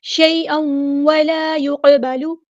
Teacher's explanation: قاف پہ یہاں پر قلقلہ ہوگا